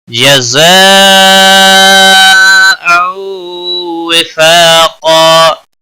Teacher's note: جزاء مد متصل ہے، 5 الف کے برابر کھینچ کر پڑھیں گے